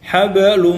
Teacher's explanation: lumnya itu ditahan, didengungkan, digunnahkan. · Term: idgham bi gunnah